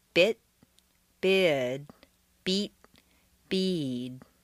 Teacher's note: when a single syllable word ends in an unvoiced consonant the vowel is on a single stair step short and sharp